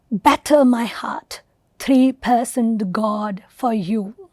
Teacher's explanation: Donne here opens instead with a trochee, a stressed syllable followed by an unstressed syllable. So while iamb was unstressed followed by stressed, trochee is stressed followed by unstressed.